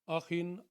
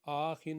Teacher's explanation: یہ جو ایک جھٹکا سا ہے آ، یہ ایک حرکت ہوتی ہے، اس سے زیادہ لمبا نہیں ہم کریں گے